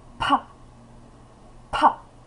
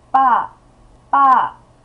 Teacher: 가장 바람이 많이 나오는 글자가 파예요. 파. 기식성이 큰 거죠.